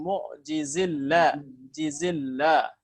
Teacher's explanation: Kalau huruf sebelumnya kasrah, maka lam pada lafaz jalalah dibaca tarkik. Ya, jangan ditebalkan.